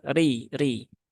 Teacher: rnya dia berbaris kasrah maka dia dibaca dengan tipis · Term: tarqik